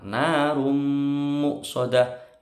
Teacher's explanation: Tanwin ketemu mim, dengung lama.